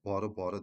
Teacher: Bu ikisi vurğusu sonuncu hecadadır. Barı barı deyə tələffüz edilir.